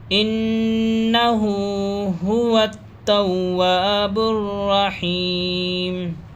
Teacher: انہ، گنہ کریں گے، نون پر جہاں بھی یہ تشدید ہو اس کو تشدید کہتے ہیں، تو ناک میں آواز کو روکتے ہیں